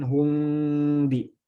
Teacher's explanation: Bagaimana diikhfakan? Kalau yang berpendapat dengan furjah, ya direnggangkan sambil digunnahkan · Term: ikhfa syafawi